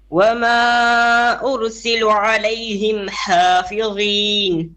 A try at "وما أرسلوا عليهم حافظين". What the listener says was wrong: أرسلوا long vowel on the lam.